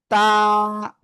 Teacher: জিহ্বার আগা সামনের উপরে দুই দাঁতের কোথায় লাগবে? গোড়ায় লাগবে, লাগিয়ে উচ্চারণ করতে হবে তা,